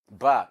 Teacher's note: ba is by a bilabial sound because two articulators are meeting and they are upper lip and lower lip.